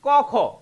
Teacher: এই যে ক খ এই দুইটা হচ্ছে কি ক খ অঘোষ